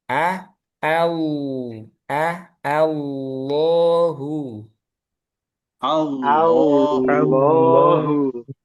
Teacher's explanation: A-nya tipis lam tebal.